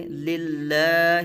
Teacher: آگے للہ، اب یہاں دیکھیے اس میں جلالت اللہ عز و جل کا یہ جو درمیان والا لام ہے جس کے اوپر تشدید ہے تو اس لام سے پہلے والا جو لام ہے اس کے نیچے زیر ہے تو اس لیے جو اگلا لام ہے اس لام کو باریک پڑھا جائے گا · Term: لام باریک